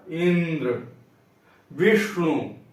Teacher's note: ई तथा वी पर बल है या बलाघात है।